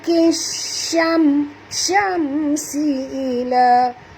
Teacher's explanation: Mim mati bertemu dengan sin, tak boleh dengung izhar syafawi